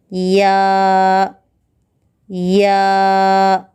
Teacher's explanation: ज़ुबान के दरमियानी हिस्से को तालु के दरमियानी हिस्से से मिलाने से अदा होता है